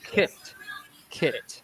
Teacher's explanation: For example, the short vowel kit, kit, it's very short. It's actually at the front of your mouth.